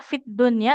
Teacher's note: Kemudian ini ya fidunya tidak fil dunya ya alif lamnya lam sukunnya tidak dibaca dia fiddunnya langsung ke huruf huruf dalnya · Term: Idgham syamsiyah